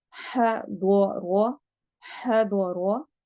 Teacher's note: दौद मोटे हरूफ में से है, रो को भी हमने मोटा करना है क्योंकि इसके ऊपर फतहा आ रही है